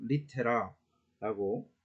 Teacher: R은 이제 혀 구르는 소리를 내면 된다 그래요. 근데 보통 뭐 R 우리가 흔히 이제 이야기하는 그 발음하고 비슷하게 날 것 같습니다.